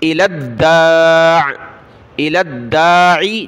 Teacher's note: لام کو دال کے ساتھ ملا دال کو سخت کریں گے